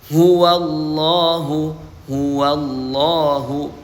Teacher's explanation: Huruf ha keluar di tenggorokan sebelah bawah